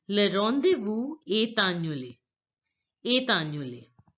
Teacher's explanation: word ends with the consonant T and the next word annulé begins with the vowel. The next word annulé begins with the vowel A. So we are going to link the words together this way.